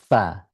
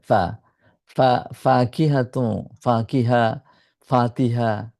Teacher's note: নিচের ঠোট আর উপরে দাঁত